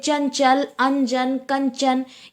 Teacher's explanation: है जैसे चंचल जैसे चंचल चंचल में ना साइलेंट होता है चंचल में ना जो है ना की ध्वनि जो होती है वो प्रतीत नहीं होती है